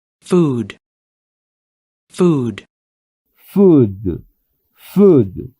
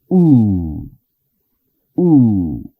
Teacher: esta U es una U como en español, pero un poco más larga